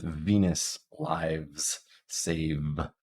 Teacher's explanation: It's the same as F, it's just that your vocal folds are vibrating. So if you know F, you know V. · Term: voiced version